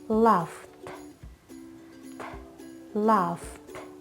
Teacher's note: ED ending once again is pronounced ta after unvoiced sounds.